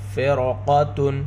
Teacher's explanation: رائے ساکنہ کے بعد حروف مستعلیہ میں سے قاف ہے، اس لیے را کو پر پڑھیں گے۔ قاف حروف مستعلیہ میں سے ہے اور یہاں پر تفخیم کا دوسرا درجہ ہے، قاف کو موٹا کر کر پڑھیں گے۔